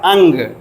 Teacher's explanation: पहले अ का उच्चारण होता है उसके पश्चात ञ का उच्चारण होता है तब ग का उच्चारण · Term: अनुस्वार